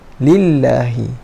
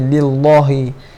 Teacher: Tapi di sini berbaris kasrah. Bila baris kasrah kita kena nipiskan kalimah Allah.